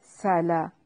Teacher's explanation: تدلیل و ارسل، آرو، را کو موٹا کر کے پڑھنا ہے، را ساکن سے پہلے والے حرف پر فتحہ ہے تو را کو موٹا ادا کریں گے۔ سلا، سین کو باریک سیٹی کے ساتھ ادا کرنا ہے، لام کو ہلانا نہیں ہے۔